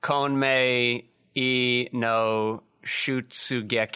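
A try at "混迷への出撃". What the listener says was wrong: Yes, so the letter E that you saw after Konmei, that E is pronounced E.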